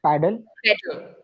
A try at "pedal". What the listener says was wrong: pedal, not paddle, pedal. Pedal. word is pet. So the hint is pet.